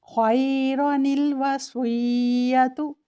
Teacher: number 2 نون قطنی یعنی نون تنوین سے پہلے جو الف ہے اسے نہیں پڑھیں گے، متحرک حرف کو بغیر لمبا کیے نون کو پڑھیں گے اور آگے چلیں گے